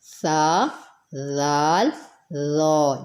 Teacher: یہ تینوں نرم حرف ہیں، ان کو سیٹی سے نہیں پڑھنا، ان کو نرمی سے ادا کرنا ہے